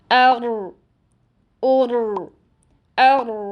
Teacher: रॉ का मखर जबान की नोक और इसके मुकाबिल सामने के ऊपर वाले दो दांतों की मसूड़े हैं जबान की नोक का थोड़ा सा ऊपरी हिस्सा इस्तेमाल करते हुए